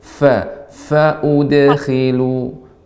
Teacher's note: Fa, ya, ibu harus lebih banyakkan lagi hamesnya. Karena sifat fa adalah hames, banyaknya udara mengalir.